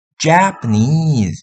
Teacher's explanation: dua suku kata pertama Japan itu kan nggak bisa di unstress semua sehingga dikasih secondary stress pada kata pertama ja. Jadinya nanti majanya agak ditekan itu ja.